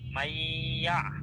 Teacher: মনে রাখবেন জজম এবং তাসদি পাশাপাশি আসলে জজম বিশিষ্ট হরফটা বাদ পড়ে যায়। এখানে নুন সাকিনের পরে ইয়া আসছে। এ কারণে গুন্না হবে। আর পড়ার সময় তো নুন সাকিনটা বাদ পড়ে যাবে।